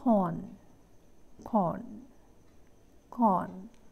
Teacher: the back of the tongue is raised to a position between half open and half close